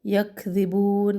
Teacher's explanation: کاف کو بہت زیادہ سختی سے بھی ادا نہ کرے، اس میں قلقلے کی صفت بھی نہ لے کے آئے، اس کو ہلانا نہیں ہے کاف کو.